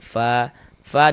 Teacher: Misalnya fa dibaca panjang. Mad thobi'i panjang dua harakat.